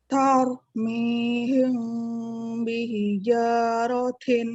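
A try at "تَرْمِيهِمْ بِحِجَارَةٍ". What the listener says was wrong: Ya, huruf ta-nya jangan lupa hamusnya. Tau, mihim. Ya, jadi langsung ini ya, bibirnya juga ini ya, bereaksi gitu, ibaratnya ngikut.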